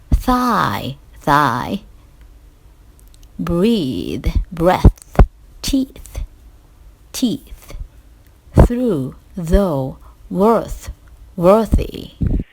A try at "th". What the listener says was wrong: I think that especially when the th is in the beginning of the word, and sometimes at the end, you're having trouble differentiating between the voiced and the voiceless interdental